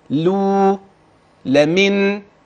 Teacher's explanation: لاحظت ايه في اللامات اللي في الكلمات دي حتى الان الصوت ايه مرقق ليس غليظا